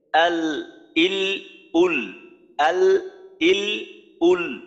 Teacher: এখন যখন আমি জজম উচ্চারণ করব তখন লামের আওয়াজটা কিন্তু আমার চালু রাখতে হবে, অল্প সময় চালু রাখতে হবে। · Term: তাওয়াসুত